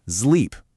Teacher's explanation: you have to add a little buzz to it, making it a Z sound